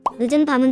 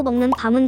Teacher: 소리의 길이를 예로 들자면 늦은 밤은 짧고 먹는 밤은 길어